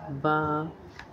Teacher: दोनों होठों के तली वाले हिस्से को मिलाकर जुदा करने से अदा होता है बा